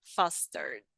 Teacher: the E it's mute and we just pronounce the D.